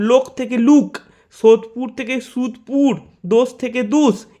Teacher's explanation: উচ্চমধ্য অর্ধসংবৃত পশ্চাৎ স্বরধ্বনি ও উচ্চারিত হয় উচ্চ সংবৃত পশ্চাৎ স্বরধ্বনি উ রূপে